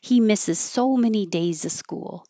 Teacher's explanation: If it's before a consonant, you can drop that V and just say So days school. · It's not exactly two syllables, but when you say school, your lips round and then unround, so it's almost two parts.